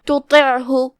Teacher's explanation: دونوں کی ادائیگی ایک ہی جگہ سے ہوتی ہے، لیکن دھیان رہے ہم تا کو ہلکی آواز میں پڑھیں گے، پھر حرف الطا کو موٹی آواز میں پڑھیں گے